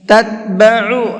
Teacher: عین کو حلق سے نکال کر کے پڑھنا ہے